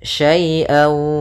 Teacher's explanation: sambil ditahan gunnahnya karena dia idgham disertai dengan gunnah. Wala, kemudian pada lafal la di sini ada bacaan mad tabi'i, yaitu adanya fathah bertemu dengan alif. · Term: idgham bi gunnah